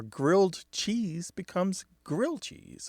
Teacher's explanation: the ED does tend to drop off of words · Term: lenition